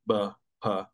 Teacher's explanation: bilabial b p, where it's just the two lips touching